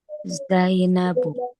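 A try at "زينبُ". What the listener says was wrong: Zainabu, sahih. Bukan Zainabun ya, Zainabu.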